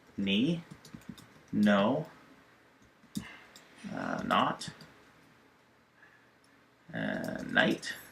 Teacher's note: You've got a KN, just pronounce it like the N, so the K is silent.